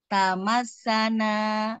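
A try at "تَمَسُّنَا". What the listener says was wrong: Nah, tamas agak dialirkan dulu.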